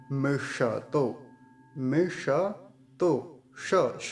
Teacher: तो मूर्धा से बोला जाता ता है ये हमारे कंठ में हमारे मुख में ऊपर मूर्धा एक स्थान होता है जहां से ट ठ ड ढ ये बोले जाते हैं तो वहीं से श भी बोला जाता है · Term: मूर्धन्य सकार